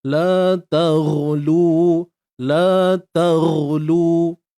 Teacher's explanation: Huruf ghain matikan dengan mengangkat pangkal lidah kita. Kemudian lu ni kita baca 2 harakat sahaja.